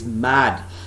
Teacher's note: It starts with bilabial sound, which is a nasal sound at the same time.